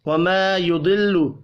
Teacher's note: وَمَا يُضِلُّ الف مدہ ہے, ایک الف کے برابر کھینچ کر پڑھیں گے. ضاد حروف مستعلیہ ہے, پر پڑھا جائے گا